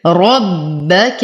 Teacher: أشدد الباء مع تفخيم الراء